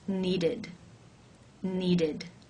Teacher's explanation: the ED is pronounced as the I as in sit with the D sound